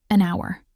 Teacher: the word hour starts with the letter h which is a consonant but the h is silent. The word sounds like hour which starts with a vowel sound.